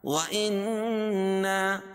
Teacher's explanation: پہلے نون مشدد ہے اس میں غنہ ہوگا اور الف سے پہلے نون کے اوپر زبر ہے تو الف مدہ ہو جائے گا.